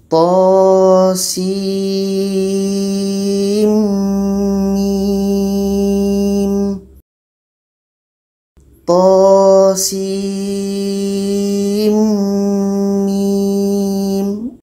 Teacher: mati bertemu dengan mim hukumnya Idgham Bighunnah ada proses idgham jadi diantara Sin dengan mim ini di tengah-tengahnya ada dengung dengung 2 harkat